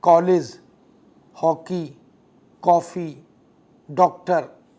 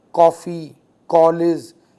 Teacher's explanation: वह अ और आ या आ और ओ दोनों के मध्य का स्वर है